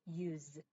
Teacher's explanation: 얘가 use 사실 이게 s로 돼 있지만 아까 계속 소리를 강조한 게 는 무성음이죠. 근데 이게 사실 그 사전에 발음 기호를 찾아보면 얘는 use 해서 z 소리가 납니다.